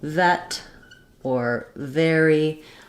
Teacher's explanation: made with the upper teeth and the lower lip together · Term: V sound